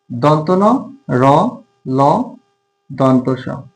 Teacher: তো দন্তমূলীয় ধ্বনি যেটা আছে সেটা হচ্ছে দাঁতের গোড়া বা দাঁতের মূল, জিহ্বার ডগা দাঁতের মূলে আঘাত করবে এরকম ধ্বনি